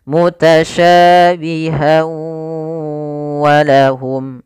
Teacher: Idgham disertai dengan gunnah, maka masukkan tanwin pada huruf ha, masuk kepada huruf waw dan ditahan suara wawnya. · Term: idgham bi gunnah